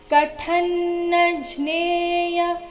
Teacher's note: ಇಲ್ಲಿ ಕಥ ಥ ಮಹಾಪ್ರಾಣ ಹ್ರಸ್ವ ಬರಬೇಕು. · ಮ ಮೇಲೆ ಆಘಾತ ಬರಬೇಕು. ಮುಂದೆ ಸ್ಮ ಎಂಬ ಸಂಯುಕ್ತ ಅಕ್ಷರ ಬಂದ ಕಾರಣ.